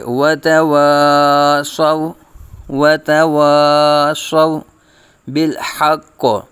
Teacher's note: الف مدہ ہوگا، وتواصوا صاد کو پر پڑے جائے گا اور واو ساکن سے پہلے زبر واو لین کا قاعدہ بغیر کھینچے بغیر جھٹکا دیے · الف سے پہلے زبر الف مدہ ہوگا، وتواصوا صاد کو پر پڑے جائے گا